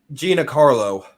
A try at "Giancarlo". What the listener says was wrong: No, it's pronounced Jean. Like it's Italian. Gian Carlo.